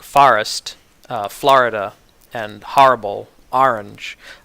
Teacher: But for some other words, like forest, Florida, and horrible, orange, I have all of the more open vowels, the ah sound.